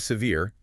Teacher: Notice the stress on the second syllable